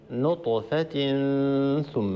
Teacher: عندنا تنوين وبعد حرف الثاء، الحكم هنا إخفاء